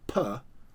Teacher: PA is articulated on the lips and so it's called a labial plosive